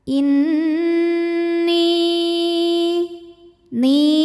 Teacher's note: bunyi dengungannya tahan sampai ada suara masuk hidung kurang lebih dua harakat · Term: gunah musyaddadah, gunnah musyaddadah